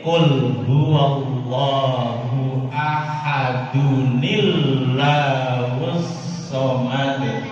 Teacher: suara nun sukun dirubahlah menjadi suara nun berbaris kasroh. Bukan didatangkan nun kecil di bawah, tapi memang asli dari suara tanwin yang asalnya suara nun sukun.